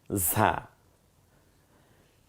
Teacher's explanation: ঝিঝি আওয়াজে বাতাসটা বেরিয়ে আসবে, জিব্বাটা খানিকটা পাতলা হয়ে যাবে ভেতরে